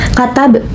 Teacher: Katab hukum tajwidnya yaitu qalqalah sugra. Terdapat huruf ba mati di tengah kalimat dan dibaca itu dipantulkan